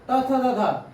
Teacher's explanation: जब जी मतलब हम तब बोलते हैं तो देखिएगा जीभ दांत में टच हो रहा है तो वो दंत से होता है